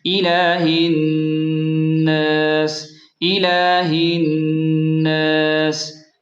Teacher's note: وقف کرتے وقت سین کی آواز نرم سیٹی جیسی ہوگی، الہ الناس، الہ الناس۔